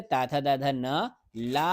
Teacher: ता वर्ग, ता था दा धा न, ला, और छोटे सा का उच्चारण स्थान जो है क्या है, दंताह यानी दंत है।